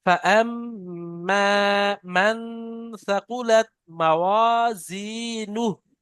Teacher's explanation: بسم الله الرحمن الرحيم فأما من ثقلت موازينه ব্যাস, এখানে মিম মুশাদ্দাদ গুন্না, নুন সাকিনের পরে সা এসে ইকফা, দুটো গুন্না করতে হবে